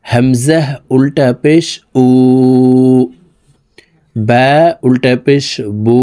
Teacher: উল্টা পেশের উচ্চারণ ঠোঁট গোল করে উপরের দিকে ধাবিত করে এক আলিফ টানিয়া পড়িতে হয়।